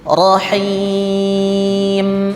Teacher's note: Ada dari hidungnya bunyinya seperti lebah. Nah, ini disebut dengan gunnah. Gunnah artinya dengung, sengau.